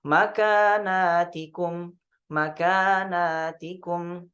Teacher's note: Sedangkan di riwayat Syu'bah dibaca zada alifan ba'dan nuni 'alal jam', ya. Itu ada tambahan alif setelah nun. Jadi nunnya dibaca panjang.